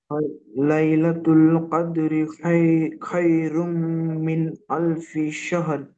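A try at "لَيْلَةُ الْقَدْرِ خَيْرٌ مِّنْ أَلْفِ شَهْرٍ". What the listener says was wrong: মাশাআল্লাহ, খুব সুন্দর হয়েছে।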